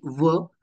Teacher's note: दंतोष्ठ दात आणि ओठ असे दोन्ही उच्चारण स्थान आहेत